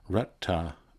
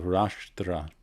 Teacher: So Rashtra, which is a kingdom perhaps, or a realm, or even a country, and of course there's a Maharashtra in India today, becomes, because this kind of consonant combo doesn't work well in Pali, it becomes smoothed out to this double retroflex the T and the TH, Ratta, instead of Rashtra